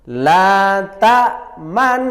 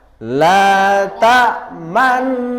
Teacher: Bibir mecucu atau moncong di tengah-tengah dengung sebagai isyarat bunyi dhammah. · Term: Ishmam